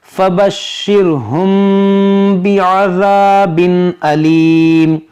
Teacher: تو یہاں پر ہے اخفاء شفوی، یعنی یہاں پر غنہ کریں گے۔ یہاں پر دیکھیں تنوین کے بعد حمزہ ہے تو یہاں پر کریں گے اظہار، یعنی یہاں پر غنہ نہیں کریں گے۔